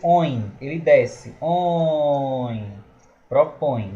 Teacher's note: Propõe, a gente vai ver aí que vai ser um ditongo nasal decrescente, porque OIN, ele desce.